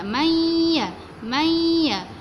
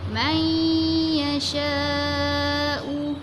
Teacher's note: Kita masukkan huruf nun ke dalam huruf ya. Macam huruf nun ni tak jelas bunyi dia. Dia terus pergi kepada huruf ya. May ya. Tengah-tengah lidah kita mesti kena lelangit.